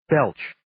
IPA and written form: beltʃ (Belch)